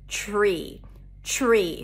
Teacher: when the t appears before an r it has a ch sound to it tree tree so it feels like we're adding a sh to